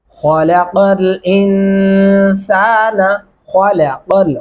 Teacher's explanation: خلق خا کو موٹا اور پر کر کے پڑھیں گے